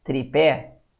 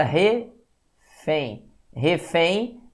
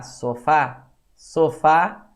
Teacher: a sílaba tônica é a última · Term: palavra oxítona